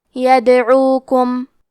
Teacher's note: کلمت یدعوکم میں حرف دال پہ جزم ہے، دال بھی حروف القلقلہ میں سے ہے، تو ہم یہ حرف کو ہلاتے ہوئے یہ کلمہ کو پڑھیں گے۔